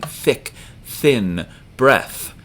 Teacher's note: Tha is the unvoiced th sound you're not vibrating your voice box